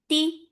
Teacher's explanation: for kasra give E sound, and no flow of sound here. Ti, very sharp sound.